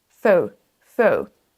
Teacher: La première syllabe, en fait, il y a 2 sons, c'est une diphtongue, on va dire faux, faux. Il faut d'abord faire un son O et ensuite un son OU.